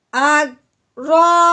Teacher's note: رو کے اوپر آ گئی ہے زبر، رو کو اب ہم نے موٹا کرنا ہے